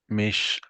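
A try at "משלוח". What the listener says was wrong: There's no foot on the left leg of this. If there were a foot, like you see here, it would be a top.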